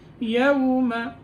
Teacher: یوم میں جب واو کی ادائیگی ہوگی تو ہونٹ گول ہو جائیں گے